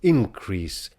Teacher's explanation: We today would be inclined to stress it on the first syllable, increase, when we mean the noun, and to increase when we mean the verb.